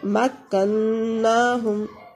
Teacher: مکناہم، مکناہم، یعنی نون کے اوپر شد ہیں تو ہم غنہ کریں گے، زبان تالو سے لگے گی اور آواز ناک کے ذریعے ادا ہوگی